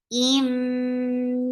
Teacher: this is idgham with gunna, so you are keeping the sound in your nose for a longer time.